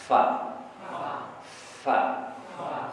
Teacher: ke bibir bibir Insyaallah mudah ma ma wa wa ba ba bibir bawah digigit sama Gigi atas supaya ada tetap udara mengalir